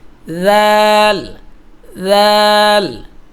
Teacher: পাতলা হবে। জিহ্বাটা দাঁতের আগার মধ্যে লাগবে।